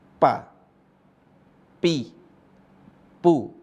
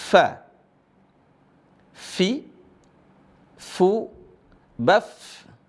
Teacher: Cara baca huruf fa, gigi seri atas bertemu dengan bibir bawah.